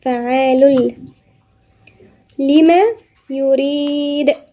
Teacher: بعدين الضمتين دول التنوين بالضم وبعديها حرف اللام، واللام من حروف الاستثناء يبقى ما فيش غنة. فعال في إدغام بغير غنة، يعني بندغم اللام في اللام التانية